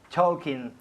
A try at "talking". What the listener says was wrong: A ver, ha dicho talking. Nunca decimos la L en talking. Talking. Es cuando como hace toc, toc, toc, ¿no? En la puerta, la L queda muda. Muda.